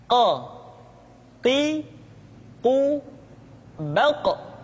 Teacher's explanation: huruf qf diucapkan dengan cara menyentuhkan pangkal lidah kita dengan langit-langit bagian belakang Q Qi qu baq diucapkan dengan suara yang tebal dan dalam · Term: huruf Qaf